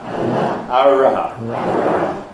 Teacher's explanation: it's termed post-alveolar. So we term that post-alveolar because it's made rather further back on the alveolar ridge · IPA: ɑɹɑ